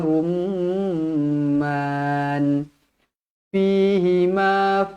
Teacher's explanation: mim yang bertanda sabdu wajibul gunah dengung dua harakat